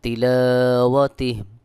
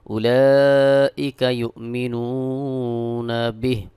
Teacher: হা খাড়াজের হি ওয়াকফ করলে এখানে হা সাকিন হয়ে যাবে।